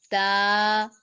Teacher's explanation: زبان کی نوک اور ثنایا علیہ یعنی اوپر والے سامنے والے 2 دانتوں کی جڑ سے جب زبان کی نوک لگے گی تو یہاں سے تا ادا ہوگا